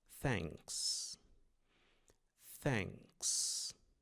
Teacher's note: Ele é um som parecido com ã com um c pronunciado com a língua entre os dentes